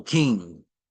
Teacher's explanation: NG is a nasal and guttural sound you would use your throat and the nasals your nasal to